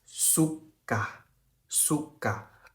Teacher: 就是因为这个K呢，它是发G的清音